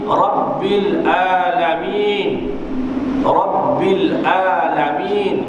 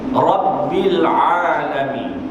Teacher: Jadi di sebutan ain mestilah diberatkan sedikit, ditekankan sedikit pada makhrajnya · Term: huruf ain